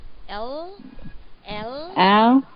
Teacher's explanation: for the L sound, the one that I'm saying, your tongue should be bitten by your teeth a little bit